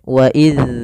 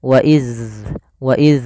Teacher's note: Jaroyanu as-saut, atau maaf, ya dia tidak ya mengalirnya suara, tidak inhibas, tidak ditahan sebagaimana kalau dia syiddah. Maka harus dialirkan suaranya ketika melafalkan dzal sukun. Wa iz, ada alirannya. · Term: sifat rokhawah